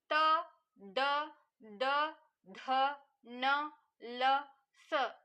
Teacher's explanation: ಇವು ದಂತ್ಯ ಹಲ್ಲುಗಳ ಸಹಾಯದಿಂದ ಉತ್ಪತ್ತಿ ಆಗತಕಂತವು